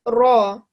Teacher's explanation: we give it a round circular mouth when we say it and a thick sound. So ra. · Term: thick letter